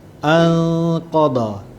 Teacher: Anqadha. Okey, nun mati, tak ada tanda mati, kemudian bertemu dengan huruf qaf, ikhfa hakiki